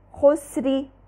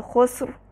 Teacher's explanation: مثال دیکھ لیجئے، خسری، یہاں دیکھیے را پہ کسرہ ہے لیکن جب ہم اس کو وقف کر کے پڑھیں گے تو خسر، خسری را باریک پڑھا لیکن جب وقف کریں گے تو خسر، را کو مفخم پڑھا